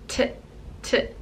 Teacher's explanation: The next sound is unvoiced and it is t, t. And you're just using the front of your mouth and your tongue is behind the teeth, t, t. So not using back here, just here, t, t. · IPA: /t/